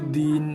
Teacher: Do bagi bawah bunyinya di, bukan de. Bila masuk N, di, din. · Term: baris satu